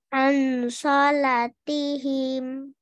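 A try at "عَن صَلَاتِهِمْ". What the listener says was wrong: Coba ikfanya dinikmati lagi. Ditahan.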